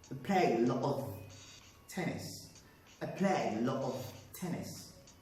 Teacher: So I glottalize L-O-T, and also I linked it to the weak form of this word, O-F.